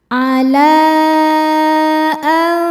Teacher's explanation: Cara bacanya bunyi nun sukun disamarkan menuju makhraj fa disertai dengung. Jadi ujung dua gigi seri atas mau disentuhkan dengan bibir bawah bagian basah. · Maka huruf lamnya dibaca panjang boleh empat boleh lima harakat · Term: ikhfa hakiki, mad jaiz munfasil